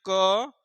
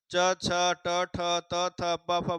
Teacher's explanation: च, छ, ट, ठ, त, थ, प, फ बोलेंगे, इनको इतने वर्णों को उच्चारण करेंगे तो जो है कंपन नहीं होगा, स्वर तंत्रियों में कंपन नहीं होगा, जो उच्चारण स्थान है वहां पे कंपन नहीं होगा। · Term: अघोष